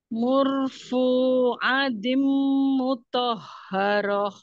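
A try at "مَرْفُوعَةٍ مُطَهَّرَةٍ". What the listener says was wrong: Bukan mur ya, marfu. mar. Marfuatim Enggak, ati itu ya. Tim, tim.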